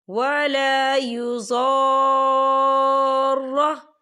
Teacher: اس کی مقدار جو ہے 6 حرکت کے برابر ہوگی، یعنی کہ ہم اسے 6 حرکت کے برابر کھینچ کے پڑھیں گے۔ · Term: مد لازم